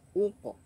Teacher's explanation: harus disempurnakan u-nya, jangan ok tapi uq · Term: bunyi u